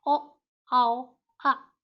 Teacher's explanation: कंठोष्ठ्य होता है कंठ और ओष्ठ यानी गले और होंठ के उच्चारण से।